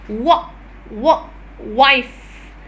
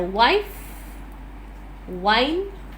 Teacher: vellus sound because it uses a soft the soft palate and the back side of the tongue rises towards the soft palate